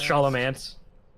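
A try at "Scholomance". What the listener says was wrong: I think it's Skolomance is the correct pronunciation because it sounds like school. I think that's how you pronounce it.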